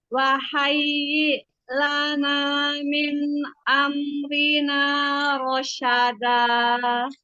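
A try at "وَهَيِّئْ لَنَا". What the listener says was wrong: Bilang wahayyi, tegaskan hamzah. Wahayyi lana min amrina rasyada.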